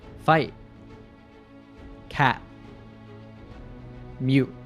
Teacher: when a word ends with a T, we cut the sound at the back of the throat. This is called a glottal T.